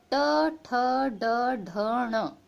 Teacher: Next है ट, ये से हम टा वर्ग भी कहते हैं। ट ठ ड ढ ण, ये 5 वर्ण हो गए आपके टा वर्ग में, ये होते हैं मूर्धन्य।